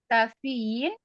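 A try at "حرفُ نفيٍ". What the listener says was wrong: Fa-nya sukun.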